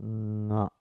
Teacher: Now you make an opening. Allow the breath to pass through the nasal, to the nostrils. The same sound, soft sound, becomes nga. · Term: oronasal sound